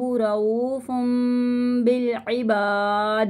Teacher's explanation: یہاں پہ دال ساکن ہو جائے گا اور دال کی آواز پلٹ کر آئے گی